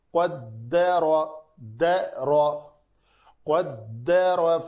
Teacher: یہاں پہ قاف پر ہے، را زبر کے ساتھ بھی پر ہے، دال بیچ میں پتلا حرف ہے